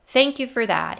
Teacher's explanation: he says fast not pausing and not stressing anything